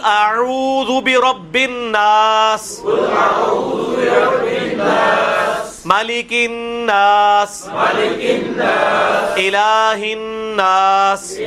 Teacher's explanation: اس میں تو غنے ہی غنے ہیں، نون تشدید والے ہی آ رہے ہیں